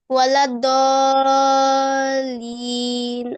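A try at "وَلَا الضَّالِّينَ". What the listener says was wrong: আরেকটা হচ্ছে দ, দ হচ্ছে হেভি, দ, দ একটু লাইট করে দিলে এটা ওয়ালাদ দলিন।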